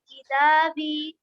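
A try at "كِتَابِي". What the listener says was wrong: चलिए बहुत अच्छा।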